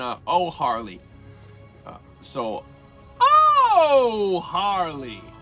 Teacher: Oh, in the nose, then through your mouth.